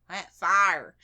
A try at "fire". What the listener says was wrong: there's no Y in it at all. It's fire.